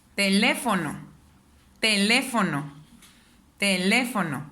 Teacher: Aquí el le es donde suena más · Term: sílaba tónica